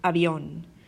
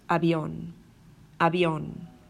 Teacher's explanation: Inside of a word, an example would be avión, which means plane, avión. So you'll notice the B is very, very light, avión, avión.